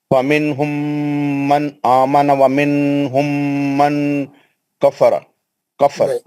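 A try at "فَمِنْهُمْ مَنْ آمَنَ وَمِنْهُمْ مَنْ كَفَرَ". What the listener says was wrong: नहीं, नहीं कर रहे ना आप, आखिरी का इख्फा आखिरी में आप, क्योंकि आप दो जगह गलतियां कर रहे हैं। एक तो मीम के इजहार को खींच दे रहे हैं और इख्फा नहीं कर रहे।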